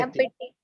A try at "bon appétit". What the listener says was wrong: अपेटी. टॉ sound नहीं है French में, टॉ साउंड है, बो अपेटी.